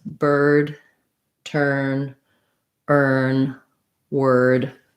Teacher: So all of these words, bird, turn, earn, word, they all have the sound, the stressed R. It's the only vowel sound. We hold it long. We have that tight position.